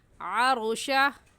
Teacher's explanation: را ساکن کو پر یعنی موٹا کر کے پڑھیں گے، اور موٹا کرنے کا طریقہ کہ آپ کے دونوں ہونٹ گول ہو جائے۔ ایسے پڑھیں گے عروشہ، ربک میں را کے اوپر زبر آ گئے، اس لیے اس را کو بھی موٹا پڑھیں گے۔